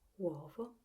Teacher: the accent goes on the second vowel, the o